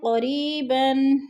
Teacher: یا مدہ کو ایک الف دو حرکات کے برابر لمبا کر کے پڑھنا ہے